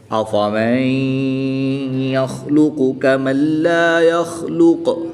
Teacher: نون ساکن کے بعد یا حروف یرملون میں سے ہے، تو یہاں پر ادغام مع الغنہ ہوگا، غنہ کر کے پڑھیں گے